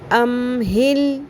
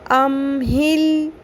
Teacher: اب یہاں پر کسی حرف کو نہیں ہلانا، جو ساکن میم اور لام ساکن ہے ان کو ہلانا نہیں، ام ہل اس طرح نہیں کرنا، ٹھیک ہے؟